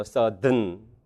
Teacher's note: 둘 다 발음이 맞고 슈아를 탈락시키면 네이절이 성절음이 됩니다.